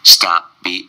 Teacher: And the P swallowed pretty much. Stop be, b, strong B.